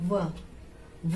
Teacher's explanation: दांत का और होंठ का दोनों का प्रयोग हो रहा है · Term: दंतोष्ठ